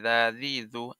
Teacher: জাল জিহ্বার আগা হতে নরম ভাবে আদায় হবে